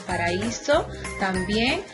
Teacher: Paraíso también, la A y la I van separadas en sílabas diferentes